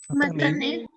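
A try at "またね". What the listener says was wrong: yo escucho un poquito alargado el sonido de la E. ¿Será que le ponemos abajo una rayita? O matané, a diferencia de decir matané.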